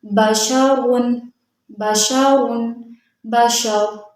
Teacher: را کے اوپر دو پیش، را کو موٹا پڑھیں گے۔ حالت وقف میں را ساکن ہو جائے گا، دو پیش ختم ہو جائیں گے، پیچھے والے حرف یعنی شین کے اوپر زبر ہے، شین کو جب را سے ملائیں گے تو را کو موٹا پڑھیں گے۔